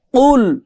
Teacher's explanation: একটার এই কফ আরেকটাতে এই কাফ। এই কফের উচ্চারণ হয় গলার মধ্যে ধাক্কা দিয়ে।